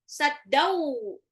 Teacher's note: tanwin ketemu waw itu adalah idgham bil gunnah, dilebur dan ditahan 2 sampai 3